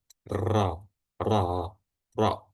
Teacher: yang bekerja adalah lidah dan itu bergetar aja. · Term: huruf ro